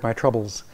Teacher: My is cliticized. It's pronounced as if it belongs to the word troubles. So my belongs to troubles, as the prosodic grouping shows underneath.